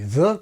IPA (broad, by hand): ðə